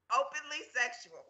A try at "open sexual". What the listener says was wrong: You added another syllable. Openly sexual. That's too long to say.